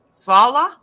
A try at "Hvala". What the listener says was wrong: Hvala. With an H. Yes, hvala.